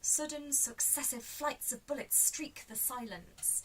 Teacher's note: you could say that the repetitive sibilants there reflects the movement of the bullets